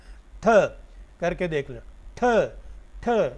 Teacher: आपकी ज़ुबान की जो टिप है वो ऊपर वाले दांतों के पिछली तरफ जाके लगती है। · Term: एल्वियोलर